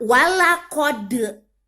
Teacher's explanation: Suara D-nya mantul. Karena dia kolkolah.